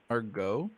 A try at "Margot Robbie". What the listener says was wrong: It's Margo. It's not Margot. You said it looks like Margot.